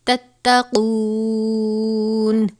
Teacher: قاف واو پیش قو ہے، واو مدہ ہے، الف کے برابر پڑھیں گے، تھوڑا سا لمبا کریں گے